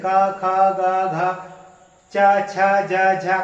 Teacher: देखिए पा, आपके ओंठ हिल रहे। पा, आप का बोल रहे थे तो ओंठ नहीं हिल रहे